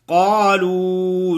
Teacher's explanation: قاف موٹا پڑھیں گے، آگے لو جو ہے وہ مدہ ہے تھوڑا سا لمبا کریں گے. قالوا قاف الف قا ہے، ادھر الف مدہ ہے ادھر وہ مدہ ہے.